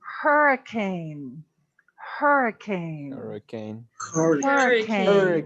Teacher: a silent h everything else has an h that's pronounced so hurricane does not come from french we're gonna pronounce that h